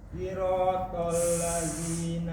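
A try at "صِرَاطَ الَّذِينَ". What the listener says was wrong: Desisnya kurang. Siratal. Si. Lebih kencang.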